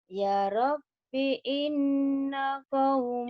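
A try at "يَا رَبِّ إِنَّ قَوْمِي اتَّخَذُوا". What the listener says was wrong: ya-nya panjang. Ya-nya panjang. Ya-nya panjang.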